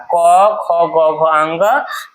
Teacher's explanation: इन सब का उच्चारण कहाँ से होता है? कंठ से होता है।